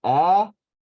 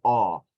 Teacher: instead of saying ah as the vowel, it's going to say aw as the vowel